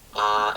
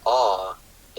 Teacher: There is a merger of sounds that is occurring here, and so the distinction between ah and aw is being lost across the country.